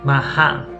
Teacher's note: she doesn't quite pronounce the T fully. She uses a glottal stop.